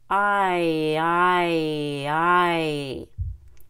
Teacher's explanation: well you start it short o and ends at long e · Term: long I